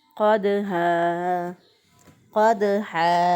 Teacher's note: क़ाफ को हम मोटा पढ़ेंगे यहाँ पे, क्योंकि कव्वे के पास से ज़ुबान की जड़ ऊपर के तालु के साथ लगे तो क़ाफ अदा होता है। जब ज़ुबान की जड़ ऊपर के तालु की तरफ उठती है तो उस वक्त मोटे हरूफ अदा होते हैं, तो क़ाफ जो है वो भी मोटा है।